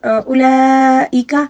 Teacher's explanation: اولئک یہاں پر مد لازم ہے، اس کو تقریباً 5 الف کے برابر کھینچ کر پڑھنا ہوگا